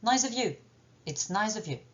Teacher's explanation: je veux le faire passer rapidement et donc j'utilise la réduction vocalique